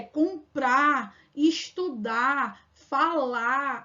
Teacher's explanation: o R no final que a gente consegue apagar aqui no Nordeste